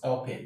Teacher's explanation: In the right articulation of this word, the stress here, the e n here is en. En is a schwa sound. It's a weak syllable.